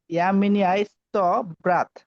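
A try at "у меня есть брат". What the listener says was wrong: উ মিনিয়া, এটা কিন্তু উ, এটা কিন্তু আমাদের ওয়ার্ডে উচ্চারণ উ। যদি ওয়াই থাকে তাহলে এটার উচ্চারণ উ, তাহলে উ মিনিয়া ইয়েস ব্রাত, উ মিনিয়া ইয়েস ব্রাত।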